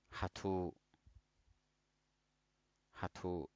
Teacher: So we stay only short on ha and longer on tu.